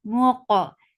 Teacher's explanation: Muqa for the circle lips, as you will touch qaf, your lips should be in a straight position. Qaf will get sifa qalqala and it is heavy.